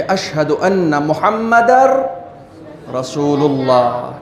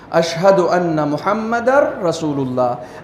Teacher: یہ نون ساکن جس کو آپ کو محمدن پڑھنا تھا، اب یہاں پر کہا جائے گا کہ یہ نون نہیں پڑھا جائے گا، بلکہ اس نون کو ہم ختم کر دیں گے، دال ڈائریکٹ ملے گا رے سے اور صرف رے پڑھا جائے گا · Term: ادغام